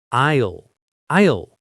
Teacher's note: The S is completely silent. It's pronounced exactly like aisle, as in I will.